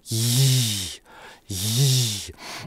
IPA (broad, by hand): ʝ